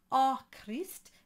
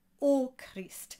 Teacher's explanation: Ô Christ, soit favorable à ce peuple fidèle. So this line starts with an O with the accent on top, and that accent does have a purpose. It is a closed O. It's not A Christ, it is O Christ.